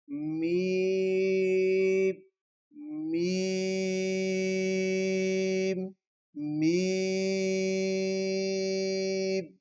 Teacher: دونوں ہونٹوں کو دبائیں گے اور ان کے خشک حصے سے میم ادا ہوتی ہے